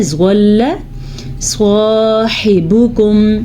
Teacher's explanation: سواد بھی یہ حروف مستعلیہ میں شامل ہے تو اس کو ہم پر یعنی کہ موٹا پڑھیں گے، زواد کو پر یعنی کہ موٹا پڑھیں گے۔ صاحبکم، یہ ہا الگ ہے، یہ والا ہا الگ ہے، اور جو نقطے والا ہوتا ہے وہ خا الگ ہے، ٹھیک ہے۔